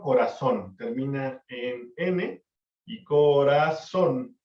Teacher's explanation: la fuerza la tiene en la última fila esa es una palabra aguda